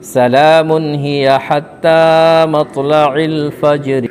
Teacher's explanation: تا کے اوپر کھڑا زبر ہے، کھڑا زبر برابر ہوتا ہے الف مدہ کے، تھوڑا کھینچ کر پڑھیں گے۔ را کے نیچے زیر ہے، زیر کو حالت وقف میں جزم سے بدل کر پڑھیں گے۔